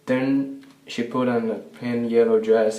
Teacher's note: he's putting a d instead of that voice th for the first word then